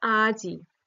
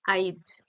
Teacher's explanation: এই স্বরধ্বনি যেটা শেষে আছে সেটা আগেই উচ্চারিত হয়ে যাবে